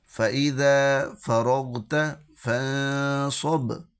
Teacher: اب یہ با کو ہلانا ہے، کیونکہ یہ حروف قلقلہ میں سے ہے۔